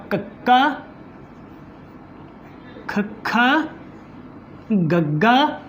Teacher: ਜੀਭ ਦਾ ਜਿਹੜਾ ਬਿਲਕੁਲ ਪਿਛਲਾ ਹਿੱਸਾ ਜਿਹੜਾ ਹੈ ਉਹ ਨਰਮ ਤਾਲੂਏ ਦੇ ਨਾਲ ਲਾ ਕੇ, ਕੋਮਲ ਤਾਲੂਏ ਦੇ ਨਾਲ ਲਾ ਕੇ ਹਵਾ ਨੂੰ ਰੋਕਦੇ ਹਾਂ, ਫਿਰ ਝਟਕੇ ਦੇ ਨਾਲ ਬਾਹਰ ਛੱਡਦੇ ਹਾਂ, ਤਾਂ ਉਹਨਾਂ ਨੂੰ ਅਸੀਂ ਕੰਠੀ ਧੁਨੀਆਂ ਕਹਿ ਦੀਆਂ।